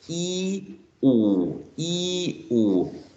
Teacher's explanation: If you produce these two sounds, e-oo, e-oo, you should feel that the tongue goes forward and backwards, forward and backward.